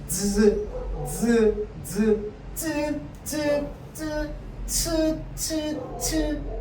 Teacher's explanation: 공기가 흐르는 통로를 한번 막았다가 조금만 열어주고 마찰을 시키는 거야